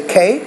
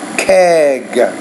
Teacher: the K is a voiceless consonant, the G is a voice consonant, and voice consonants typically, you have to produce the vowel a little bit longer before that word.